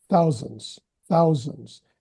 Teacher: More emphasis on thou than sons.